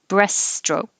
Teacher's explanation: Forget about that T in the middle right there.